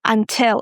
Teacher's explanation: in the word until. Guys, we stress the second syllable, tell.